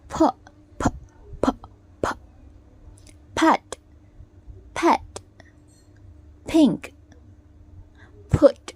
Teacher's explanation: the lips form a complete closure plugging the air and then the air is released sharply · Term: plusive